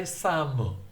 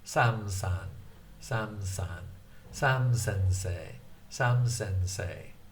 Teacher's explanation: when they combine it together with San, the U in the Mu tends to disappear.